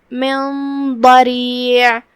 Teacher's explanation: را کے نیچے زیر ہے، را کا حکم ہے ترقیق، ہم را کو ہلکی آواز میں ادا کریں گے · کلمت من ضریع یہاں نون پہ جزم ہے اور اس کے بعد حرف ضاد آتا ہے کلمت ضریع میں. ضاد کی ادائیگی زبان کے کروٹ اور اوپر کے داڑھوں کی جڑ سے ہے تو ہم ضاد کو وہیں سے پڑھیں گے. · جو کہ ضاد حروف تفخیم میں سے ہے تو ہم اسے بھاری آواز میں ادا کریں گے، اور جو کہ اس سے پہلے حکم اخفاء آتا ہے کیونکہ نون پہ جزم ہے تو ہم یہ حکم کو غنہ سے ادا کریں گے. اور دھیان رہے غنہ بھاری ہو، تفخیم سے ہم غنہ کو ادا کریں گے کیونکہ ضاد حروف تفخیم میں سے ہے.